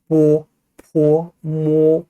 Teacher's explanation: 그래서 입술 소리입니다. 윗입술, 아랫입술이 붙었다 떨어지는 양순음, 쌍순음이라고 하죠.